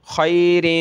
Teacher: یہاں دو زیر کی تنوین ہے یہاں ہم نے ناک میں آواز پیدا کرنی ہے